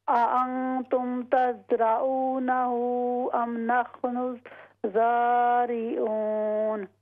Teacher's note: را کو لمبا نہیں کریں گے اور آگے ہا لمبی ہوگی